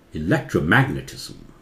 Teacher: मैग्नेट जोर से, इलेक्ट्रो थोड़ा सा जोर से, उसे बोलते हैं सेकेंडरी एक्सेंट या सेकेंडरी स्ट्रेस, ठीक है। ये लाल में जो है वो जोर से, प्राइमरी स्ट्रेस, इलेक्ट्रोमैग्नेटिज्म।